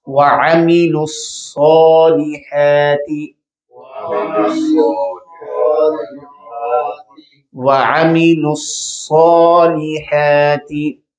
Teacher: صاد حرف جو ہے اس کو موٹا پڑھا جاتا ہے، اور اس کے اوپر کھڑی زبر آ گئی ہے، لمبا بھی کیا جائے گا۔ · پھر لام زیر لی، عام زبر ہے، زیر ہے، پھر اس کے بعد ہا ہے، اس کو لمبا کر کے مدہ کی طرح پڑھا جائے گا، اور ہا حلق کے درمیانہ حصہ سے ادا کی جاتی ہے۔